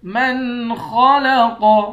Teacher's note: خا اور قاف دونوں کو موٹا پڑیں گے، قاف پر جب وقف کریں گے تو قاف کو ساکن کر کے قاف پر قلقلہ کریں گے۔